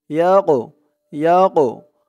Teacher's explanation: এই কফটা কলকলার হরফ ধাক্কা দিয়ে পড়তে হবে